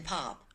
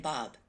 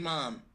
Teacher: these are bilabial consonants made with both lips